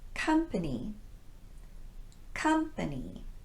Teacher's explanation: here i'm using the unrounded uh sound as in cup